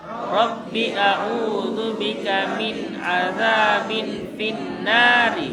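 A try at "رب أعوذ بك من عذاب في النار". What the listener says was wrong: Jangan panjang robbinya, pendek. Rabbi'a, langsung jangan Rabbi a'udzu bika min 'adzabin finnari.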